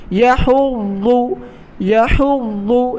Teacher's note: ضاد کو ہمیشہ موٹا ادا کیا جائے گا، زبان اپنی داڑھوں سے لگائیں یعنی سائیڈ والے دانتوں سے لگائیں۔